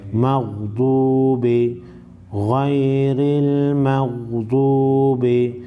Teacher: गैन और द्वाद हुरूफ मुस्तालिया को मोटा पढ़ेंगे।